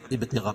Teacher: ابتغاء مد متصل ہے، قاعدہ کہ حروف مدہ کے بعد حمزہ اسی کلمے میں متمد متصل ہوتا ہے، اس میں توسط اور طول ہے، یعنی 2 الف سے لے کر 5 الف تک اس کو کھینچ کے پڑھیں گے